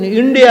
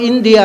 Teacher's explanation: ಟ ಹೇಳಿ ಬರುವುದಿಲ್ಲ ಅವರಿಗೆ ಅಂದ್ರೆ ಮೂರ್ಧನ್ಯವಾದ ಸ್ವರವೇ ಹೋಗುವುದಿಲ್ಲ ಮೇಲಕ್ಕೆ ಹೋಗುದೇ ಇಲ್ಲ ಅವರಿಗೆ